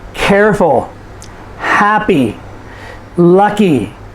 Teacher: So these are adjectives, and you'll notice that we stress the first syllable.